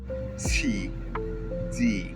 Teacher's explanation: Both these sounds are produced right behind the teeth. In English, you pronounce T and D by putting your tongue right in between your upper teeth and your bottom teeth.